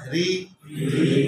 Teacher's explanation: রি যখন জের হবে তখন তো তালুতে জিহ্বার আগা থাকে না রার নিচে জের লাগাইলে জিহ্বার আগা তালুতে আর থাকছে না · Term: বারিক